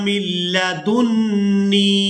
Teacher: यहाँ मीम को लाम मुशद्दद के साथ मिलाएंगे, नून साकिन को छोड़ देंगे। इसके बाद हमने दाल को नून मुशद्दद के साथ मिलाना है और गुन्ना के साथ अदा करना है।